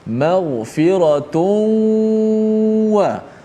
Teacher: Memasukkan suara nun mati pada tanwin maghfiratun itu dalam huruf waw. Jadilah dia seperti huruf bertasydid. Maghfiratun wa. · Mulut kita masuk dalam waw, hidung kita lalukan, dia punya bunyikan suara gunnah, suara dengung itu. Panjangkan dengung sikit. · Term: idgham ma'al gunnah